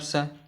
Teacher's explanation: इसका उच्चारण स्थान होता है दंत्य, दंत्य यानी दांतों से, है ना, दांतों से इसका उच्चारण स्थान होता है, इसलिए इसे दंत्य व्यंजन कहते हैं, अर्थात ये दंत्य वर्ग का है।